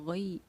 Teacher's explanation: اس کو نرم آواز کے ساتھ جلدی ادا کریں گے کیونکہ یہ حرف لین کہلائے گی